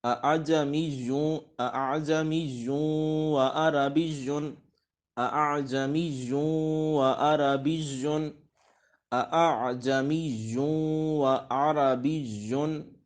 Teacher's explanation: یعنی دوسرے حمزہ کو نرمی کے ساتھ پڑھیں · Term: تسہیل